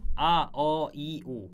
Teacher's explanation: 맨 처음 소리를 낼 때 입모양 변한 거 빼고는 그 이후로는 변하지 않죠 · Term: 단모음